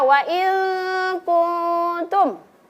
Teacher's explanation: maka cara membacanya nun sukunnya disamarkan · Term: ikhfa hakiki